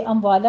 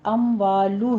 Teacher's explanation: ہونٹ گول کیجیے، ضمہ ہے یہاں پہ